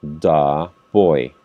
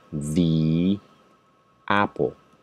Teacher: Cuando inicia con una vocal, se pronuncia di.